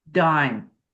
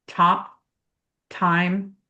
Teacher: D is voiced. It's made in the same way except one is voiced, one is unvoiced.